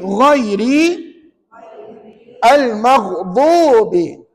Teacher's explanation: bagaimana kaedah menyebut ghain. Hampir ke anak tekak.